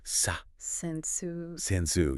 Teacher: The second syllable is a schwa. It's the lazy sound.